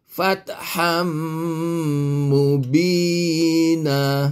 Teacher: Jadilah dia idgham ma'al ghunna. Idgham yang beserta dengan dengung sekadar 2 harakat